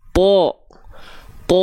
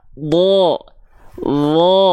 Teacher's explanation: dia termasuk dalam huruf yang tebal dia condong vokalnya ke vokal apa ke vokal o